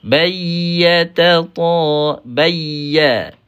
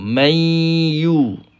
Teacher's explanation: Jangan naik ke hidunglah yang ni. Ini hanya melibatkan tengah lidah sahaja.